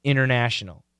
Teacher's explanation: We get rid of the T. We cancel the T, right?